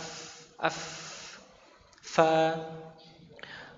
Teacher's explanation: Jadi gigi atas bertemu dengan bibir bagian dalam. Waf af bukan bibir bagian luar.